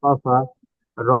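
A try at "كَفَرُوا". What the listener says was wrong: যেটা টান আছে ফাটা টান দেবেন না, রুটা টান দেন, কাফারু।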